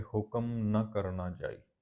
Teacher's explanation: ਨ ਸ਼ਬਦ ਹੈ ਇੱਥੇ ਨੰਨਾ ਮੁਕਤਾ, ਇਹਨੂੰ ਲਮਕਾ ਕੇ ਨਾ ਇੱਦਾਂ ਪਾਠ ਨਹੀਂ ਕਰਨਾ। ਅਸਲ ਵਿੱਚ ਇਹ ਨਾ ਵਾਚਕ ਦਾ ਸੰਖੇਪ ਰੂਪ ਆ, ਲਘੂ ਰੂਪ ਆ ਉਸਦਾ।